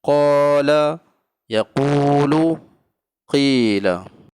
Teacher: Ketiga huruf mad asli ini dibaca 2 harakat.